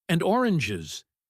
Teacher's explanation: And oranges. and his voice falls heavily · That falling voice on the last item is your signal to stop writing. It means the thought is complete.